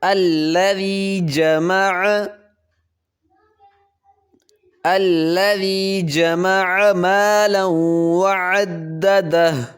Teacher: ذال پہ نرمی کریں گے اور لام کو پتلا پڑھیں گے